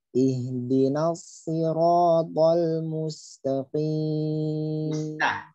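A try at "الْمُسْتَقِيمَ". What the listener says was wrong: Musta. Jangan musto. Musta. Jangan musto. Jadi ada yang kadang bacanya tanya kurang tipis. Musta. Mustaqim.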